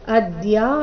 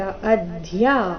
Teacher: ಅದ್ಯಾ ಬೇಡ, ಅಧ್ಯ ಮಹಾಪ್ರಾಣ ಸ್ಪಷ್ಟವಾಗಿ ಬರಬೇಕು